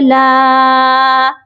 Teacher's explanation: لام الف زبر لا، لام کے ساتھ الف ہے اسی لیے لام کو ایک الف کے برابر لمبا کر کے پڑھا جائے گا